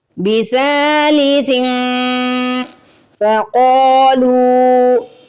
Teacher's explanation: تنوین یا نون ساکن کے بعد فا آ جائے تو فا چونکہ حروف اخفا میں سے ہے اس لیے ہمیں یہاں پہ اخفا کرنا ہے